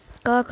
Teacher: जीव्या मूलम यानी जीभ की जड़ से उच्चारित होता है